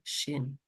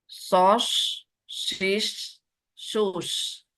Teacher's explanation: Kalau shin menyebar, sod berdesis. Makrotnya pun beda ya.